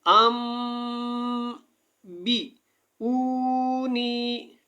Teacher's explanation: یہاں پہ کیا کرنا ہے، آپ نے یہ جو چھوٹا سا میم لکھا ہوا ہے نون ساکن کے اوپر اور اس کے بعد جو ہے یہاں پہ با ہے، تو آپ نے یہاں پہ کیا کرنا ہے، ہونٹوں کو بند کرنا ہے، تھوڑی دیر آواز کو جاری رکھنا ہے اور یہاں پہ غنہ کرنا ہے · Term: اقلاب مع الغنہ